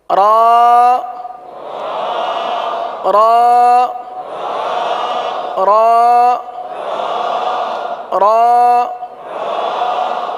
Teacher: रा के लिए जबान जो है यह दांतों की तालू की जानिब वाले हिस्से की तरफ मुड़ती है और सीधी होती है उस तरफ जाती है और सीधी होती है यही इसका मखर · را کا مخرج ہے زبان کا کنارہ اور دانتوں کی جڑ کے تالو کی جانب والے حصے سے ادا ہوتے ہیں۔ دانتوں کی جڑ کی تالو کی جانب والے حصے سے ادا ہوتے ہیں۔